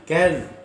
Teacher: Wa kaz, jangan qaz tapi kaz di depan makhraj qa, di pangkal lidah